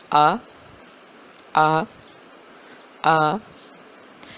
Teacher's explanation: آپ ادائیگی کریں، آ، آواز نکالیں، الف کی آواز نکالیں، آ، آ۔ آپ کے ہونٹ، زبان کہیں بھی نہیں لگ رہے، منہ کے خالی حصے سے الف کی آواز آ رہی ہے